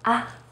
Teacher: say it as in the first tone except that you say it in a more light and short way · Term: neutral tone